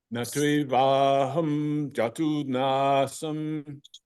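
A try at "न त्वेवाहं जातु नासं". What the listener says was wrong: Jatu is too short. Overdo it.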